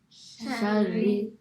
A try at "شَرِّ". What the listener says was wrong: So kasra makes an e sound, not a ra. So it's not ra, shari, shari.